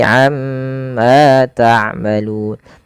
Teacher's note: Kemudian pada lafal amma ta'malun, tahan pada bunyi ma, amma, karena pada lafal tersebut ada yang dinamakan dengan bacaan gunnah. Itu cara membacanya, nya ditahan.